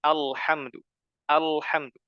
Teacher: huruf lam itu tidak boleh dibaca tebal